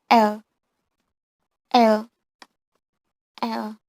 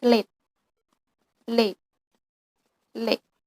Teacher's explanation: L sound is liquid lateral voice on alveolar coronal place.